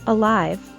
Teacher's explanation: with the word alive we stress the second syllable